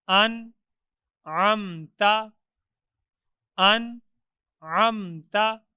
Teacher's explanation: نون ساکن کے بعد حروف حلقی میں سے عین ہے، تو ادھر نون کو ظاہر کر کے پڑھیں گے